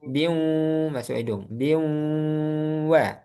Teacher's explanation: Bin itu mengandung nun. Nun sifatnya ghunah. Jadi ada sifat ghunahnya. Bi masih masuk hidung dia. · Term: Idgham bighunah